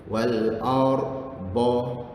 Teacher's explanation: Maka lekatkan lidah tu dekat gusi gigi atas, kiri atau kanan. Okey. Wal ar ba. Masa masuk ar, lidah tu melekat. Masa nak sebut ba, baru lepaskan lidah tu.